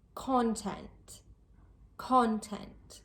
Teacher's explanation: The stress is placed on the first part of the word, the first syllable. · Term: word stress